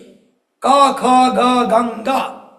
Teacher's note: क ख ग गंगा एक ही जगह से, जिसको कंठ कहते हैं